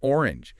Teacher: notice there the O in orange isn't quite the long O sound of the letter name.